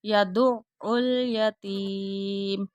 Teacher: عین کے اوپر شاد بھی آ رہی ہے اور عین کی آواز حلق سے نکالنی ہے